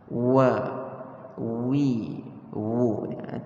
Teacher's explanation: ia adalah satu huruf yang keluar ataupun kita panggil makhrajnya daripada dua bibir mulut kita yang kita muncungkan. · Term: huruf waw